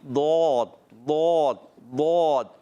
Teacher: ضاد ادا ہوتا ہے زبان کا بغلی کنارہ اور اوپر کی داڑوں کی جڑوں سے. یاد رکھنا ہے حافۃ اللسان یعنی زبان کا بغلی کنارہ اور اوپر کی داڑوں کی جڑوں سے ادا ہوتا ہے ضاد.